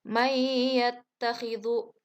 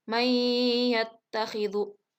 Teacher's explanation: Nah, di situ ada nun mati menghadapi ya. Jadi nunnya itu tidak terdengar, namun langsung dimasukkan ke huruf ya. Nah, dan sedikit ditahan. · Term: idgham bigunah